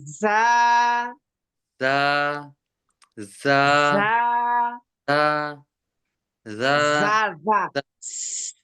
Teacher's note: জাল জাল র ঝা, যা যখন বলবেন, যা ঝা বলার সময় যাটাতে বলবেন, যাটা হ্যাঁ বলার সময় নিচের দাঁতের সঙ্গে লাগবে, উপরে দাঁতের না। নিচের দাঁতের আগার সঙ্গে নিচে জিহ্বার আগা লাগবে।